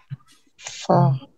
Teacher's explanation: ऊपर वाले सामने के जो दांत है, वो नीचे वाले होंठ पर लगेंगे ऐसे। · उंगलियां के नोक नीचे वाले होंठ के शिकम पर लगती, शिकम कहते हैं पेट को, ठीक है, यानी नीचे वाले होंठ के ऊपर दांत लगते हैं आपके